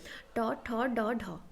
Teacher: then मुर्धन्य स्पर्श व्यंजन ध्वनि मृण स्पर्श जब होता है मतलब जो टंग है वो दांत का थोड़े से पी पीछे वाला जो हिस्सा है उसी को टच करता है